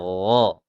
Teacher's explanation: Tenggorokan atas. Kemudian pangkal lidahnya itu dinaikkan supaya terlihat sifat isti'la'nya. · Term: huruf gha